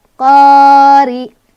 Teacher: Cara bacanya adalah ditipiskan atau dengan mulut yang agak mundur dan tampak sedikit meringis. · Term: ri tarkik